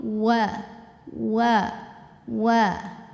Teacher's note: Wa juga karena makhrajnya mengumpulkan 2 bibir, maka monyong dulu.